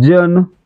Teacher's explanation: जन मध्ये य जोडल्यासारखा उच्चार आहे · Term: दंत तालव्य